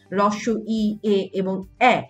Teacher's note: তো অগোলাকৃত স্বরধ্বনি হচ্ছে হ্রস্ব ই, এ এবং এ, এদেরকে কিন্তু অগোলাকৃত স্বরধ্বনি বলা যেতে পারে, কারণ তোমরা দেখতেই পাচ্ছ ঠোঁটের অবস্থান কিন্তু গোল না বরং অগোল